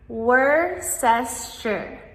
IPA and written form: ˈwʊstərʃər (Worcestershire)